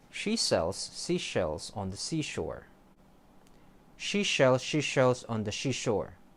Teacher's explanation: Notice that the sound shi is combined with an SH sh instead of an S.